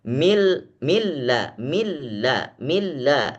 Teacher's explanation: Nun sebenarnya ada Nun di tengah tapi tidak terdengar lagi